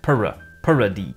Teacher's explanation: they are perceiving a slight schwa vowel after the R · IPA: /pɜɹə/, /pɜɹti/